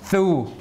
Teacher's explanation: That's how they write the TH sound. So this is like THU. So it's the interdental fricative.